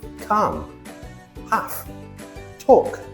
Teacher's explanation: Over time, speakers found it easier to drop the tongue movement for the L. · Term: Silent L